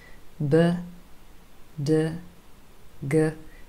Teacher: you can feel clear vibration from your vocal cords in your throat. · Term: voiced consonants